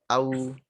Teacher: Nah, cuman hati-hati ya, seperti yang kemarin udah dijelasin, ketika ngucapin huruf lin yang waw sebelumnya fathah, tidak au. Tidak mengarah ke vokal o, arahkan ke w setelahnya u. Au, ke arah u.